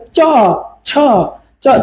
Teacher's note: জিহ্বার মাঝামাঝি অংশটুকু আমাদের তালুকে, ছাদকে ছুঁয়ে দিচ্ছে, ছাদকে। আর মিডিল মানে একবারে প্রারম্ভিক অংশে, তালব্য বর্ণগুলো প্রারম্ভিক অংশে উচ্চারণ করবেন।